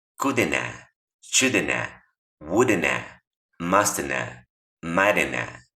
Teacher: Muchas veces o la mayoría de las veces la V ya no la vas a percibir cuando la pronuncian los nativos.